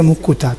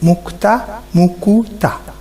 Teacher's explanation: সময় সময় উচ্চারণের সুবিধার জন্য সংযুক্ত ব্যঞ্জন ধ্বনির মাঝখানে স্বরধ্বনি আসে। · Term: মধ্য স্বরাগম